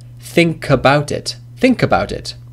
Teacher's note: The last sound is ka, which is a consonant, and about, the first sound is a, which is of course a vowel. So the last consonant, as in think, links to the vowel. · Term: linking